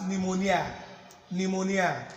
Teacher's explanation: But the P is actually silent.